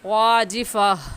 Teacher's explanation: گول تا پہ جب ہم وقف کرتے ہیں تو وہ ہا بن جاتی ہے